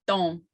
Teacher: it doesn't have an N sound in it at all, but it's just a nasal sound. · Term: nasal O